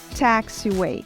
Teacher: A letra A, que segue a letra T, ganha um som entre a letra A e a letra E aberta.